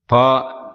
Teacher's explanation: உதடுகள் இரண்டும் ஒட்டும்போது பா என்னும் எழுத்து பிறக்கிறது